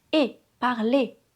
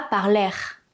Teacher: On ne prononce pas le r. Le e et le r font le son é.